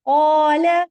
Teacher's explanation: یہاں پہ الف آیا تھا، قاف کے بعد آواز موٹی نکلی